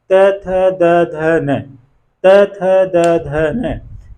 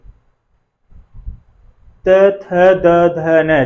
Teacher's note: हमारी जो जिह्वा है वो दांत को स्पर्श कर रही है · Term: दंत्य ध्वनियां